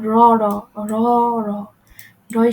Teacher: দন্তগুলির একটু উপরে মূর্ধার টোকা দেওয়ার মত ছুয়ে দিলে এভাবে তাড়িত হচ্ছে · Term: তারিত ধ্বনি